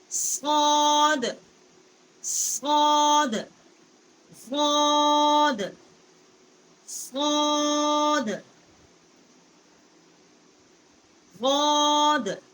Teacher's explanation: صاد کا جو مخرج ہے یہ زبان کا کنارہ جب ثنایا سفلا کا جو کنارہ ہے اس سے زبان ٹکر کھاتی ہے تو اس سے صاد جو ہے اس کا مخرج نکلتا ہے.